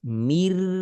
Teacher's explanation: Nun langsung berubah total menjadi huruf ro. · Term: idgham kamil